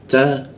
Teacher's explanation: ada bocor halus dia ya. Di posisinya di gigi dia.